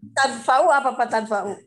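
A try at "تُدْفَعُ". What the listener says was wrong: Nah, itu tudfa'u, bukan tadfa'u, iya. Tudfa'u, diberikan.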